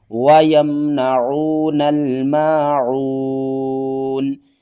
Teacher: وقف کی صورت میں نون کو ساکن کریں گے